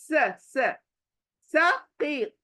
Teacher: सीटी वाली सीन, स मुंह फैल जाना चाहिए आपका बारीक होकर